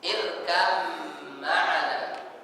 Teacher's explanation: irkam maana tidak boleh kita baca irkab maana diqalqolahkan bnya jadi ba itu langsung dimasukkan ke huruf mim secara sempurna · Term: Idgham mutajanisain, idgham mutajanissain